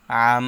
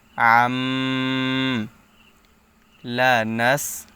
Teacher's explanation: আইন দুই জবর আম তানবিনের পরে কলবের হরফ বা আসছে এজন্য তানবিন কে পরিবর্তন করে পড়তে হবে ছোট মিম দ্বারা পরিবর্তন করে পড়তে হবে